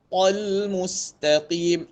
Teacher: Ta tebal jumpa alif lam nipis. Lam nipis lah sifat dia huruf nipis, dia bukan huruf isti'la, dia huruf istifal.